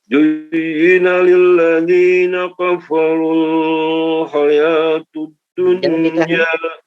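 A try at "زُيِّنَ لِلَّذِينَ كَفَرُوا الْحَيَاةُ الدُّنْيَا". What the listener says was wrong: Jangan ditahan seperti itu. Kafarul hayatud dunya, langsung. Zuyyina lilladzina kafarul hayatud dunya.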